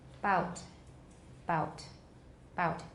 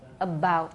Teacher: We have voicing only at the beginning of the vowel. 直到那个 vowel 那个点开始才有 voicing.